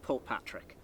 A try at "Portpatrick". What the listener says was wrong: I say it a wee bit quicker, because to me it's one word. But Portpatrick, I call it. I think everybody splits it down. into two words. Portpatrick.